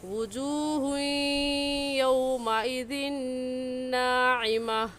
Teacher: तनवीन के बाद हरूफ यरमलून में से या आ गया है, तो यह गुन्ना इदगाम के साथ होगा